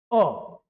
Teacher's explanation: हिंदी में अ को इसे हम केंद्री स्वर भी कहते हैं मात्र एक स्वर है जिसे हम कहां से बोलते हैं मध्य से